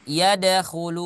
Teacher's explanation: yad itu qalqalah ya, qalqalahnya qalqalah sugro